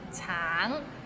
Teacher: the end has a little NG so it's a bit of nasal sound